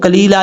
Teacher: قاف حروف مستعلیہ میں سے ہے، دو نقطوں والا قاف جو ہے وہ پر پڑھا جاتا ہے